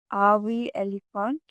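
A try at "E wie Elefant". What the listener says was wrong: So you said RV elephant. It's AV elephant.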